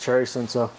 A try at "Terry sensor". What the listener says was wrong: No, it's with a T at the front, remember?